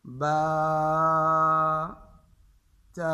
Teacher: ان کے آخر میں ہا اور جھٹکے کی آواز محسوس نہ ہو. یہ نہ ہو با تا ثا، یہ ہا کی آواز ہے، جھٹکا نہ ہو.